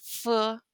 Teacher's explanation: the labiodental is F, which sounds the same as English. It's the lip on teeth